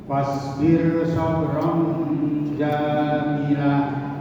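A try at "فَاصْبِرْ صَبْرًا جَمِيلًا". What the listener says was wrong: Yang panjang minnya. Fasbir sabran jamila.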